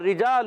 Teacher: را کے نیچے زیر ہے، حرکت ہے، را کو باریک رکھنا ہے